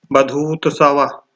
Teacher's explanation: बधूतसव में दीर्घ उ और ह्रस्व उ मिलकर दीर्घ उ हो रहे हैं। जैसे बधु धन उत्सव।